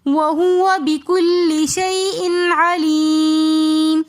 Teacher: شیء علیم کے اندر یا ساکن اس سے پہلے زیر ہونے کی وجہ سے یا مدہ اور آگے میم ساکن آ رہا ہے تو علیم ہم یہاں پر علیم کو کھینچ کر پڑھیں گے · اظہار حلقی کا قاعدہ ہو رہا ہے. یہاں پر ہم کوئی غنہ نہیں کریں گے